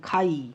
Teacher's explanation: খাই এখানে শেষে যৌগিক স্বরধ্বনি আই এটি রুদ্ধদল